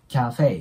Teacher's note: 後ろもね、フェだけじゃなくて、フェイっていう二重母音になるんで、アクセントを置いて